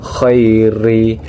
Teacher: ro di sana itu dibaca secara tarkik karena ro di sana itu adalah berbaris kasrah yang jadi dibacanya tipis